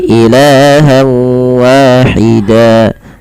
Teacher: Dipanjangkan alifnya atau dipanjangkan tanwinnya sepanjang dua harakat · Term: mad iwat